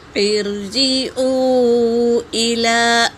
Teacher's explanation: جیم پر حرکت ہے اور واو ساکن سے پہلے پیش واو مدہ، اور اس پر مد بھی ہے تو اسے 3 الف کے برابر کھینچیں گے۔ حمزہ حرکت ہے، لام پر کھڑا زبر ہے اور اس پر مد ہے، مد منفصل، اسے بھی 3 سے 4 الف کے مقدار کھینچیں گے۔